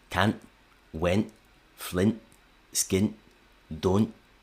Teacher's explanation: glottal replacement of T after a nasal is really common in relaxed speech